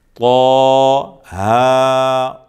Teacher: طا کے اوپر بھی کھڑا زبر ہے، ہا کے اوپر بھی کھڑا زبر ہے، 1 الف کے برابر کھینچیں گے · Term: مد اصلی